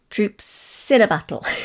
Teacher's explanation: you said troops in a battle running the words together